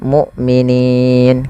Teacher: hamzahnya harus dibaca dengan syiddah dan jahar, tidak ada nafas dan tidak ada maksudnya tidak mengadirnya nafas, yaitu dan tidak dialirkan suaranya tapi tertahan.